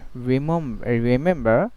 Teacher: the R is called final R, so final R, it will be silent